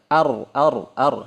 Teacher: dia keluarnya dari celah lidah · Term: takrir